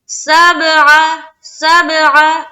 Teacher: سب میں قلقلہ کیونکہ با حروف قلقلہ میں سے ایک ہے تو یہاں پر ہم کریں گے قلقلہ.